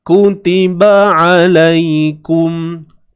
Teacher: Huruf ain ni terus balik kepada makhraj dia lah. Tengah kerongkong kita ni.